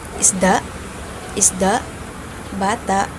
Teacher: And next is the glutal. At ang paraan ng articulasyon nito ay pasara na walang tunog. So impit siya.